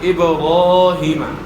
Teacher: الف سے پہلے زبر ہے، را کے بعد الف ہے، الف سے پہلے زبر ہے، تو زبر کو آپ کھینچیں گے